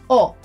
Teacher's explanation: try to avoid that English touch of yours and refrain from rounding it with your lips or adding that extra sound at the end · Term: letra O